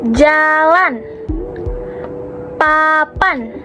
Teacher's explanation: saat kita mengucapkan bunyi A, bagian lidah kita berada di tengah dan di posisi rendah dan mulut kita terbuka lebar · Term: vokal rendah tengah